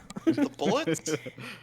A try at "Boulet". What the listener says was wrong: It's not bullets. There's an E next to the. U.